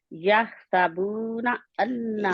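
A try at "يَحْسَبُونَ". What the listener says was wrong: سین کو ظاہر کریں،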